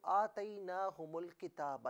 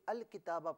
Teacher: اگر ان دونوں کو ملا کر پڑھیں اور ملا کر ہی پڑھنا چاہیے تو آتیناہم کی میم کو لام کے ساتھ ملائیں گے، درمیان سے حمزہ کو حذف کر دیا جائے گا، یعنی نہیں پڑھا جائے گا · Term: ملے ہوئے ہیں